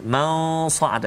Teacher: dia tak bunyi nipis macam sin lah, dia bunyi sad lah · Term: huruf yang tebal